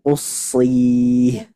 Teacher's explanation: Dan sadnya ketika mad juga tidak boleh dari hidung.